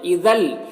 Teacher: اذل، یہاں پر تنوین کے بعد لام حروف یرملون میں سے، تو تنوین کو لام سے ملا کر بغیر غنہ کے پڑھیں گے، اس کو ادغام تام کہتے ہیں۔